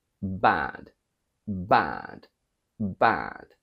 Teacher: in British we think of the a a a from bud and we quack it in the nose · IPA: /æ/